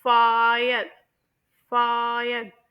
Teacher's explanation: इसमें मेरी जो टंग है वो हाई फ्रंट से लो फ्रंट उसके बाद लो फ्रंट से मजी जो तीसरी साउंड है यानी